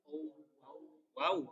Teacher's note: Yang wau keluar dengan bentuk bibir yang membulat.